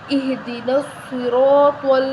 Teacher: آگے چلیں، اہدنا الصراط اہدنا الصراط ہا کو موٹا پڑھیں گے، نصراط صاد کو موٹا پڑھا جائے گا، را کو بھی موٹا پڑھا جائے گا